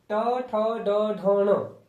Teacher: है टवर्क मुर्धन्य ट ठ ड ढ ण ये क्या मुर्धन्य तालू के मुर्धन्य भाग से इनका उच्चारण होता है